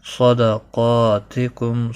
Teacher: صاد اور قاف دونوں مستعلیہ میں سے ہیں، پر پڑے جائیں گے۔ قاف کے اوپر کھڑی زبر بھی ہے، 1 الف کے برابر کھینچ کر پڑھیں گے۔ · میم ساکن کے بعد با آیا ہے، یہاں پر اخفاء شفوی ہوگا، گنہ کے ساتھ پڑھیں گے